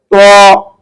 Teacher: জিহ্বার আগা সামনের উপরের দুই দাঁতের গোড়ার সঙ্গে লাগিয়ে উচ্চারণ করতে হয়